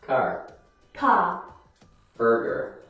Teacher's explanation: standard american english clearly pronounces the r after a vowel sound where most british english speakers don't